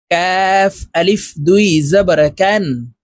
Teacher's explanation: কাফ হরফ জিহ্বার গোড়া থেকে একটু আগে বাড়াইয়া তার বরাবর উপরের তালুর সঙ্গে লাগাইয়া উচ্চারণ করতে হবে